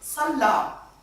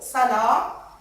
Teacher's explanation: les deux unités se distinguent par un seul trait, c'est la gémination de la consonne le dans le premier mot